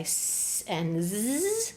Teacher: you're creating the friction, the narrow opening just behind your teeth in the same spot as t, d, n